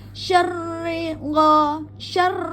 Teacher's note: Jadi eh seperti kita berkumur g ya g ya jelas syarri gho syar jadi ee pada ro yang bertasdid jangan dipanjangkan, hanya di ee naikkan aja nadanya ya di jadi ada penekanan pada ro yang bertasdid